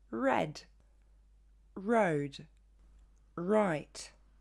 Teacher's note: bien il ne faudra pas le roulé comme en français ok en anglais il ne se forme pas au fond de la gorge